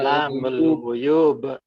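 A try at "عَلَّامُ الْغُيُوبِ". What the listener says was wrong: Alamul guyubi. Harus lengkap loh ya. Jangan bilang guyub. Guyubi. Jadi guyubi harus jelas bi akhirnya.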